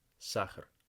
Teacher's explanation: it's kind of a shortened vowel the second time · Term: unstressed vowel